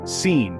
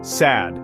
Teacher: Both are made with the tip of the tongue near the top front teeth. So where they come from is similar.